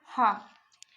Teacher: हा का जो उच्चारण स्थल है वो कंठ होता है